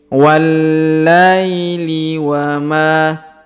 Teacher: Huruf la diayun sekali karena di depannya terdapat ya sukun